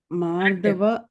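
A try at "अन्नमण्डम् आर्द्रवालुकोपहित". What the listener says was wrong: மார்தவல்ல, அன்னமண்டம் ஆர்த பாலுக உபகிதம் அப்படி பிரிக்கணும். சரியா?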